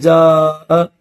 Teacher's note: جیسے جاء، یہاں پر حرف مدہ کے بعد حمزہ ہے تو اس لیے 4 الف کی لمٹ میں اس کو کھینچا جائے گا اور لمبا کیا جائے گا، اور حمزہ بھی اسی ورڈ کے اندر ہے، الگ سے کسی دوسرے کلمے میں نہیں ہے۔ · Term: مد متصل